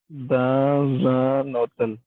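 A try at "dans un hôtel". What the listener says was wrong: हाँ, ते की। नो, ये टी नहीं ना है, आपको बताया टी जो है वो ते की साउंड देगा। अब इंग्लिश वाला तो इसको बोलेगा होटल, फ्रेंच वाला जो इसकी प्रोनाउंसिएशन है ओटेल, ओटेल, ते से जी।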